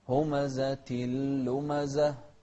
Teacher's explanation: انتبه للإدغام هني من غير غنة. همزة لمزة. شوف الهاء، نهمس في الهاء.